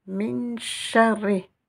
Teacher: Je fais comme si j'avais 2 lettres ra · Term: shidda